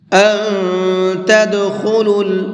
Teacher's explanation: تھوڑا سا ناک میں آواز کو چھپا کر کے پڑھتے ہیں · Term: اخفا